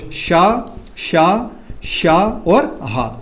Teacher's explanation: इनमें वायु की आवश्यकता हो रही है, पर घोष हुआ क्या, बिल्कुल नहीं हुआ। तो इनको बोलते हैं दोस्तों अघोष, शा, शा, शा और हा, इनको बोलते हैं अघोष।